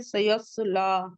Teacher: लाम पे फतह मुस्तकीमा, 2 काउंट पढ़ेंगे